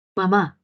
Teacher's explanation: La úvula desciende y permite que el aire salga por la cavidad nasal. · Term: nasales